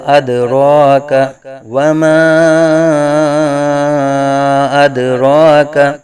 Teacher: دال ساکن میں قلقلہ خوب ظاہر کریں گے، اد را کا را پر کھڑا زبر را کو پر پڑا جائے گا